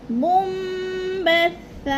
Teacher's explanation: 2 زبر کی تنوین کو وقف کی صورت میں 1 زبر میں بدل کر پڑھتے ہیں